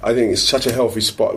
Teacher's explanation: TH sounds pronounced as f, those are kind of hallmarks of like colloquial regional accent usually